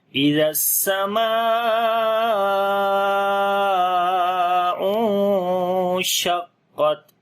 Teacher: نون ساکن کے بعد شین آ گیا، اخفا کریں گے، باریک اخفا ہوگا